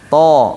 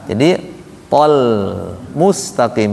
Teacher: To mulutnya biasa kan? Biasa itu maksudnya nggak ada tarikan kiri kanan.